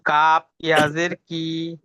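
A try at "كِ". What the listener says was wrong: হ্যাঁ, কাফের পরে ইয়া কিন্তু নেই, কাফ জের কি।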